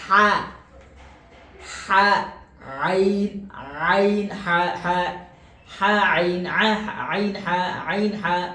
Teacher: আইন উচ্চারণ ওই হা এর মত মাঝখান থেকে